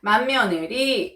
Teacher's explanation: 만며느리는 받침 디귿이 비음 미음과 만나서 비음 니은으로 바뀌었습니다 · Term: 비음화